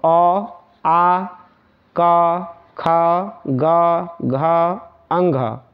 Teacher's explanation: यह सभी होंगे कंठ से इसका जो उच्चारण स्थान होता है ना वो कंठ से बोले जाते हैं